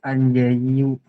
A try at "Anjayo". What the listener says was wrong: Anjayo, seperti ini. Anjayo, bukan yu. Anjayo